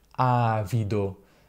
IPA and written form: ˈavido (avido)